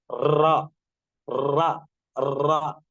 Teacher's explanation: تو ویسی ہی کیفیت ہوتی ہے را کو ادا کرنے میں کہ مخرج سے زبان بار بار ٹکراتی ہے تب را ادا ہوتا ہے. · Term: صفت تقریر